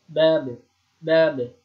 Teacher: Yang benar itu tidak ada huruf hamzahnya di belakangnya, tidak ada seperti huruf hamzah di belakangnya. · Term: qalqalah